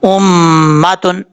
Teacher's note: میم کے اوپر شد ہے غنہ کریں گے ایک الف کی مقدار